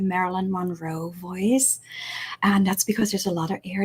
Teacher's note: there's a lot of air that's passing my throat right now